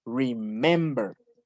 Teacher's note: Porque remember, el acento está en mem. Remember. Y no es, el acento no está en la última sílaba.